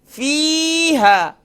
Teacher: فا کے بعد یا مدہ ہے, ہا کے بعد الف مدہ ہے, تو دونوں جگہ پر ایک الف کی مقدار کھینچیں گے